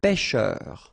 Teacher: On the top of E, it will open the sound. So you get really open.